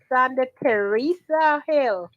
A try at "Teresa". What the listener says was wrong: Teresa, no H in it. Teresa, tell him I want him to pronounce it properly.